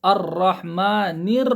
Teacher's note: نون کی آواز باریک نیچے لے کے جا کے پھر اس کے بعد را آ رہا، را کی آواز موٹی آئیں گی، ذرا اوپر آئیں گی۔ الرحمن آپ غور کرو، آواز نیچے جا کے اوپر جا رہی ہے۔